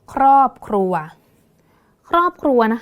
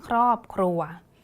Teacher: ก็จะไม่อ่านเป็นคารอบหรือขรัวเด็ดขาดนะคะต้องอ่านไปพร้อมๆกันนะคะ